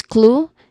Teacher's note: It is stressed and pronounced as clue with a long oo vowel sound and a consonant cluster in the beginning.